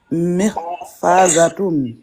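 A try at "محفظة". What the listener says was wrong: Mih. Mih. Ne prolonge pas. Mihfadatun. Vas-y, dis ha. Mih. Fadatun. Mihfadatun. Ne prolonge pas le fa. Mihfadatun.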